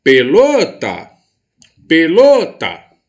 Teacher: Então, quer dizer que a sílaba lo é a mais forte, é a sílaba tônica da minha palavra.